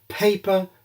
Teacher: the airstream of aspiration makes the paper move